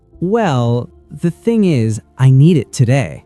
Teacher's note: A drawn out well often shows hesitation or that you're about to say something the person might not want to hear.